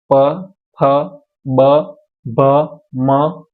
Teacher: ઉષ્ટ એટલે હોઠની જરૂર પડે એવા વ્યંજન છે